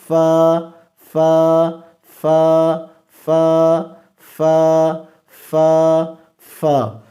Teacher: اب فا کا قاعدہ کیا ہے کہ ثنایا علیا کے کنارے تب نیچے والے ہونٹ کے اندرونی حصہ سے لگے، ثنایا علیا یہ سامنے والے اوپر والے دو دانت، ان کے کنارے، یہ کنارے، یہ کنارے تب نیچے والے ہونٹ کے اندرونی حصہ سے لگے۔ فا اوپر والے دو دانت ثنایا علیا کے نیچے والے ہونٹ کے اندرونی حصہ سے لگ رہا ہے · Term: حروف شفویہ